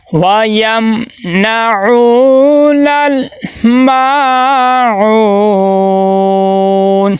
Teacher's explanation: میم کے آگے الف مدہ ہے. الف مدہ کو ایک الف کے برابر لمبا کریں گے.